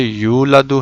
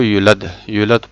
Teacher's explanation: جیسے یولدو ہے، اس کو یولد پڑھ لیا، یولدو واو کے ساتھ ہے اور واو کے بغیر یولد پڑھ لیا بغیر کھینچے